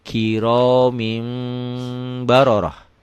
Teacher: Bunyi n-nya, bunyi nun matinya berubah menjadi mim mati. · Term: iklab